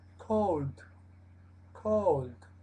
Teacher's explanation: es o con la u muy relajada muy abierta